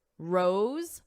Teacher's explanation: Z, z. So you hear a Z, a buzzing because it's a voiced sound.